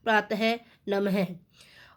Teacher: विसर्ग का प्रयोग तत्सम शब्दों में होता है और इसका उच्चारण ह की तरह होता है